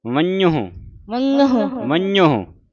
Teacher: ਨ ਦਾ ਉਚਾਰਨ ਫਿਰ ਨੱਕ ਦੇ ਵਿੱਚ ਹੋਣਾ